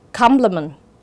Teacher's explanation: complement có dấu nhấn ở âm tiết thứ nhất